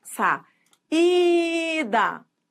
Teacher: você pronunciar saída você vai ver que a vogal que que o i é a vogal que manda na palavra ela é esse i é tônico ó sa ida leva aento porque a segunda vogal de iato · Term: tônica, vogal tônica